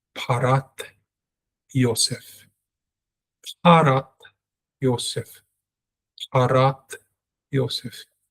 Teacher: I used to pronounce the tav as a T sound in English, but now it's a TH sound, it's a thav.